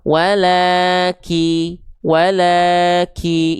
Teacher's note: Tapi tetap kadar yang sempurna dari kaf itu tidak berlebihan nafasnya. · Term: percikan nafas